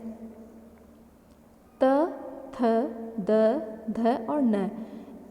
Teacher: इनका उच्चारण करते समय हमारी जो जीभ है वह दांतों का स्पर्श करती है, ऊपर के दांतों का, मसूड़ों का, इसीलिए यह दंत्य के नाम से जाने जाते हैं।